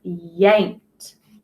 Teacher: that ED making that t sound because that k is unvoiced